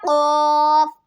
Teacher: जैसे कि अब हमने पढ़ा है कि कौफ जो होता है, कौफ मोटे वाला कौफ, वो ज़बान की जड़ और तालु के नरम हिस्से से अदा होता है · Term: मोटा काफ